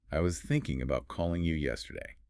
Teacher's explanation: You hear the emphasis on thinking, calling, and yesterday.